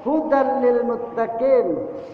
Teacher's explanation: ada tanwin bertemu dengan huruf lam maka disebut dengan idgham. Idgham itu memasukkan, ya arti idgham itu memasukkan.